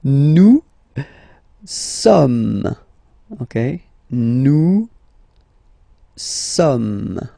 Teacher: So you don't pronounce the final S here. It doesn't exist.